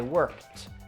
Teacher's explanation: no extra syllable but we get that T sound